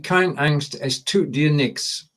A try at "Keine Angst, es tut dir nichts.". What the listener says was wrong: Remember, it's keine. There's an E there. Keine Angst, es tut dir nichts.